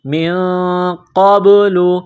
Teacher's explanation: کرنا ہے، انبیاء اللہ، میم کو نون کے ساتھ ملانا ہے، نون ساکن کے بعد قاف ہے، حروف اخفا ہے، تو نون ساکن پر غنہ کریں گے · قاف کو با کے ساتھ ملانا ہے، قاف کو موٹا کرنا ہے ، با ساکن ہے، حروف قلقلہ ہے، تو یہاں پر قلقلہ